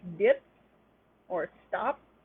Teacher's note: Unreleased P, that is a P that does not have the stop release into an open mouth shape, like puh, that tends to occur sometimes at the end of a word or before another stop.